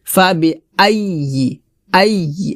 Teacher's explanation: হামজা জবর আ এটা হলকের শুরুতে উচ্চারণ করতে হবে।